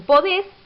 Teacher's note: el acento cae en la última sílaba